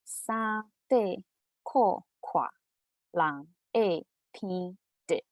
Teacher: So the first tone is a high level. The second tone it falls from high to medium. So de and ko it's lower.